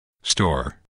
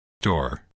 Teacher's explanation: Remove the S, and what's left is not tor, but door.